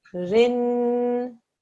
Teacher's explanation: This noon and this ra are going to join.